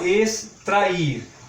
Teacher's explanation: Observem que a palavra extrair tem só duas sílabas, é uma palavra dissílaba. E quanto ao acento tônico, é uma palavra oxítona, porque a última sílaba é a mais forte